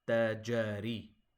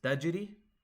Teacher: Now jim fatha is 1 count, whereas jim sukun is a bounce. You have to make sure you know the difference, and if you want, you can go back through my channel and watch the video on qalqala letters, making sukun on qutub jad, to make sure you understand the difference.